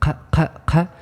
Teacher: ق is the uvular stop